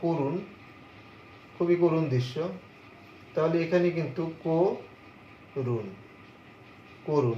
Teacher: ঠিক তেমনি তুমি যদি একটি শব্দ বলো করুণ, খুবই করুণ দৃশ্য, তাহলে এখানে কিন্তু করুণ, করুণ, এখানে তোমার পরবর্তীতে রস্য এর প্রভাবে তোমার এই পূর্ববর্তী ক এর সাথে যে অ আছে এটি সংবৃত রূপ ধারণ করে ওকার হয়েছে